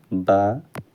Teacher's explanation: ओष्ठ, अल्प प्राण, घोष व्यंजन वर्ण का उदाहरण है बा। ओष्ठ, अल्प प्राण, घोष व्यंजन वर्ण का उदाहरण हो जाता है बा।